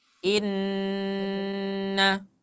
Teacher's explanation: kalau Inna dia setara dengan empat harakat Mad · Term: ghunah